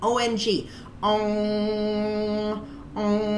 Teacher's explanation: the roof of the mouth when you're saying it om and the tongue actually hits the back of the roof of the mouth and the way you know you have the sound correctly is